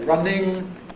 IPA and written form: ˈrʌnɪŋ (‘running’)